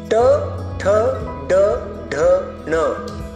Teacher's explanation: इन पांचों को मूर्धन्य कहा जाता है क्योंकि इसका उच्चारण करते समय जीभ मूर्धन्य यानी ऊपर उठी हुई होती है